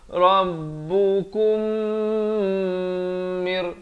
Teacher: Di sini mim mati bertemu mim idgham mislan saghir kena dengung 2 harakat. Rabbukum mir, baru masuk mir.